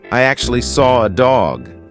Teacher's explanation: I can't see an R but I said an r that is because we have a feature called an intrusive R